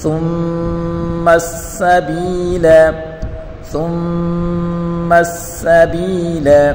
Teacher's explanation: سین تیزی والا حروف ہے، اور سین کے اوپر پڑھی حرکت ہے، بغیر کھینچے پڑھیں گے. اور با یا زیر بی یا مدہ ہے، اس کو ایک الف کی مقدار کھینچ کر پڑھیں گے